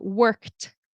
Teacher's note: They said, "What's the difference between the pronunciation of work?" Wo r k and work with an e d at the end. The e d in this word turns into a t sound.